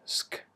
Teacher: in the US they would say schedule with a K sound, using the back of the tongue